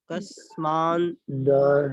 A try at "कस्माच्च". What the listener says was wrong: नासिका ना कहाँ है? वहाँ ना नहीं, कस्माच्च।